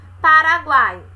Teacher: uma semivogal U, a vogal A e a semivogal I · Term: tritongo